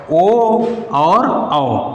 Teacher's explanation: कंठ ओष्ठ से बोला जाने वाला दो वर्ण है